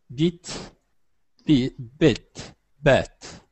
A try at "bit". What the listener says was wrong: Excellent. One more time.